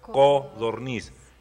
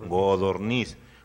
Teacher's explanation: Entonces, pero debemos reconocer que hay muchas partes donde dicen godorniz, porque la C suele sonorizarse en G, que es un fenómeno fonético